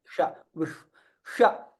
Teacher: So when you are pronouncing sha, the tongue, it goes up and touches your palate.